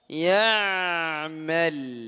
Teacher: Ditahan gunnahnya wa may ya'mal dan ain sukun ini mengalir suaranya